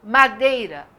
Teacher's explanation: o i também é fraquinho Tem gente que fala madeira como se o i não existisse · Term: semivogal